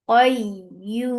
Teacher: Because of this work, you're giving temporary sukun here. This temporary sukun has turned this 2 count long vowel into 4. This is madarid sukun.